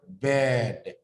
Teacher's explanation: the E sound, the tongue is in the middle part of your mouth.